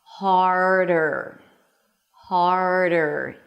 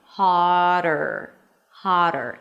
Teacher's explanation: If you skip the R here, it's going to sound like haad'r, haad'r. And yes, one is with a T, one is with a D, but as you know, the D in the middle of the word between two vowels and the T between two vowels in the middle of the word, when it's unstressed, sound exactly the same.